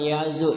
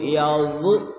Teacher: Ujung lidah bersama ujung gigi seri atas